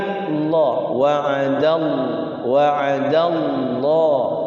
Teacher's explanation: Wa'adallahu, lafaz Allah dibaca tafkhim tebal ya, tidak boleh dibaca wa'adallahu. Kalau wa'adallahu tipis, tapi Allah. Jadi lidahnya nyentuh langit-langit.